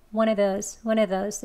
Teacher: 더 빨리 할 때는 이 of의 v 소리를 빼시고 one of those, one of those 이렇게 발음하기도 합니다.